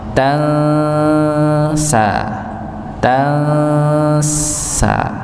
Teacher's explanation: nun sukun ketemu sin dibaca i ikhfa samar ditahan